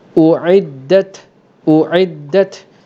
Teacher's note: lepas ta yang mati itu ada keluar sedikit angin, ada keluar lantunan angin kerana sifat hamas yang ada pada ta dan huruf kaf